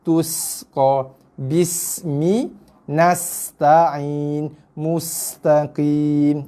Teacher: Hati-hati desirkan huruf sin. Sin ni bila berbaris mati dia ada sifat desiran.